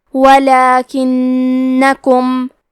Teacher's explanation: کلمت لیکنکم میں حرف نون پہ تشدید ہے، تو ہم دو حرف کے برابر نون کو پڑھیں گے، کیونکہ تشدید کی اصلیت دو حرف ہے.